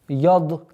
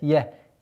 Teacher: Обратите внимание, чтобы я не подчинялась твердости дад.